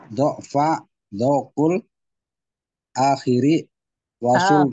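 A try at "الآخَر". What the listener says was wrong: akhori, bukan akhiri. Akhori. Ini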